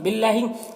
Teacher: अल्लाह के लाम को बारीक पढ़ेंगे, खड़ा ज़बर है इसे 1 अलिफ के बराबर खींचेंगे।